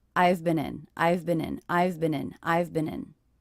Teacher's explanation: So these 3 words, I've been in, very quick, they're unstressed.